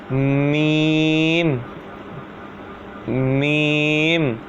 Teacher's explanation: میم دونوں ہونٹوں کے خشک حصے سے ادا ہوتا ہے